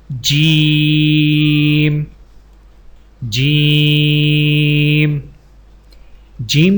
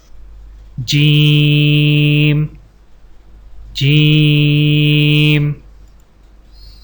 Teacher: جیم جیم جیم کی ادائیگی میں زبان کے درمیان کو تالو کے ساتھ سختی سے لگا کر باریک آواز میں پڑھیں